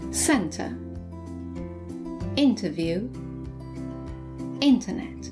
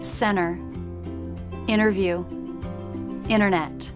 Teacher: in American English the letter T is sometimes dropped after an N